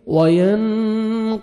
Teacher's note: نون ساکن کے بعد حروف اخفاء میں سے قاف آ رہا ہے، آپ نے نوز میں ساؤنڈ لے کے جانا ہے، اخفاء کرنا ہے، قاف کو موٹا کر کے پڑھیں گے